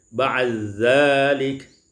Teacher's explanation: Pada ayat yang ke 94 ba'di dzalik, idghamud dal fi zal, diidghamkan dal pada zal menjadi ba'dzalik